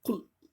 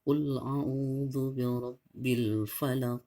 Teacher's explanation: Huruf Qaf ini jangan sekali-kali kita membaca dengan sama dengan huruf Kaf ya. Jadi kalau huruf Kaf itu ya di atas pangkal tenggorokan kita, K ya. Jadi kalau huruf Qaf itu di tenggorokan kita bagian dalam, dia Q.